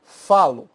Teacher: tônico recai sobre a raiz por exemplo falo a sílaba tônica é fa · A sílaba tônica é fá